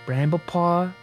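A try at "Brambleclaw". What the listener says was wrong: You said paw.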